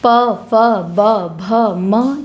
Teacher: प वर्ग पूरा ओष्ठ वर्ण है।